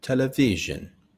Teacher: Similar sounds to the sh but with a z sound instead.